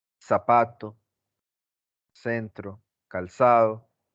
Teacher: pronunciar la Z y la C y la S de la misma manera. Todo el tiempo con la S, es sibilante. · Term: ceseo